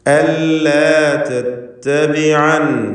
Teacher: യാ ഇല്ലാത്ത രൂപത്തിൽ അല്ലാ തത്തബിഅനി അഫഅസൈത എന്ന് പാരായണം ചെയ്യണം. വഖഫ് ചെയ്യുകയാണെങ്കിൽ നൂനിന് സുക്കൂൻ നൽകി അല്ലാ തത്തബിഅൻ എന്ന് ഓതേണ്ടതാണ്